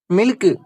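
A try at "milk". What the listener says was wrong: டேய், அதை ஏன்டா சிலுக்கு மாதிரி சொல்ற? கே நல்லா மென்மையா சொல்லணும். மில்க்.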